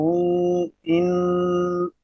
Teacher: تو نون جب ادا ہو رہا ہے تو زبان کا جو کنارہ ہے، زبان کی جو نوک ہے، اوپر والے تعلق کے سے ٹکرار دی ہے تو نون ادا ہو رہا ہے، اور اس کے بعد جو ان یہ آواز گونج رہی ہے، یہ ناک کے بالکل واسطے کے اندر گونج رہی ہے، جسے ہم خیشوم بولتے ہیں۔ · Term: غنہ